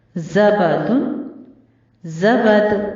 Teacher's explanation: दाल भी हुरूफ कलकला में से है, इसलिए थोड़ी सी हरकत देकर वक्फ किया जाएगा